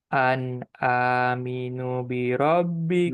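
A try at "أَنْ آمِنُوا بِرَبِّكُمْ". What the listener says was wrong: Nu-nya dua harokat. Nu bi rob. Dengungkan nun tasydid. Jangan lupa.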